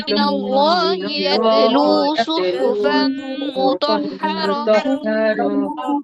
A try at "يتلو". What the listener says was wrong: আচ্ছা, ইয়াতেলু এখানে কলকলা হবে না, ইয়াতে এরকম মানে ধাক্কা লাগবে না আর কি। ইয়াতলু রাসূলুম মিনাল্লাহি ইয়াতলু সুহুফাম মুতাহহারাহ।